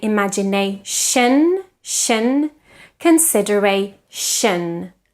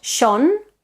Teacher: the shin endings tend to be quite problematic for us we tend to say imagination consideration but that final vowel is always a schwa · No lip rounding in the vowel